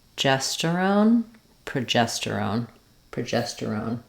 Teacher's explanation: be careful with these longer um two hormones that end with the own not to lose that o quality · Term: clear o